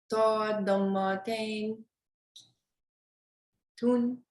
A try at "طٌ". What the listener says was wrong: Make it heavier. Ton.